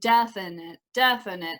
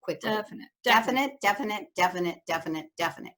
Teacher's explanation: i feel like my first syllable is the one with the most power in it